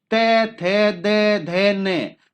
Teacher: उच्चारण करने पर आप पाओगे कि जो हमारी जीभ है वो दांतों से टच होगी। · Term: दंत्य